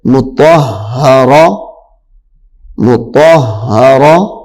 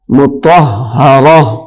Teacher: اب یہ جو تا ہے وقف کی صورت میں یہ ہا بن جائے گی.